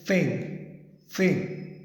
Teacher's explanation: Like your tip of the tongue, it touches the back of your upper row of teeth. Tip of the tongue touches the back row of the teeth